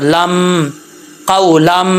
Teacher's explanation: یہاں پہ بھی ادغام جر ملون ہو رہا ہے، تنوین کے بعد میم آ رہا ہے حروف جر ملون میں سے، تو یہاں پہ ادغام جر ملون ہے اور ایک الف کی مقدار جو ہے وہ غنہ کریں گے. جب لام کو میم سے ملائیں گے تو الف جو ہے وہ گر جائے گا. لام میم دو زبر لم قولم، ٹھیک ہے.